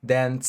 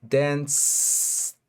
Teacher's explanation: Si estiramos el s de dance y ponemos nuestros dedos aquí en nuestra garganta, veremos que ese sonido no vibra. Dance. No hay ninguna vibración.